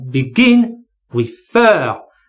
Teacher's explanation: It's begin or refer. So the stress here is on gin or fer. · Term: stress on the final syllable